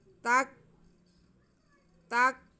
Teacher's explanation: کاف باریک ہے تو تا کا زبر ہم کاف کے ساتھ ملا لیں گے لیکن آواز ہلنے نہیں دینی